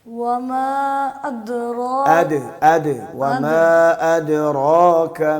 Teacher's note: حمزہ کو پہلی تحقیق سے پڑھنا ہے، پھر اس کے بعد دال میں قلقلہ کرنا ہے